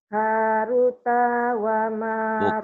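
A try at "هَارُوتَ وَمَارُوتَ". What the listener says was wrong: Bukan. Hanya panjang. Runya panjang.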